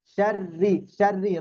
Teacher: নুন সাকের পর শিন ইখফা গুন্না